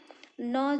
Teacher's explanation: न जो है दंत और नासिका से बोला जाता है